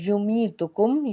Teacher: یا ساکن سے پیچھے زیر ایک الف کے برابر اس کو کھینچ کے ادا کریں گے، اور اس میں میم ساکن کے بعد سا آ رہا ہے، یعنی کہ یہاں پہ بھی اظہار شفوی ہے، غنہ نہیں ہوگا۔